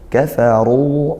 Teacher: Ru rnya tafkhim dibaca tebal. Dibaca tebal maka dia diangkat pangkal lidahnya. Kemudian ruhammah di sukun mad thobi'i.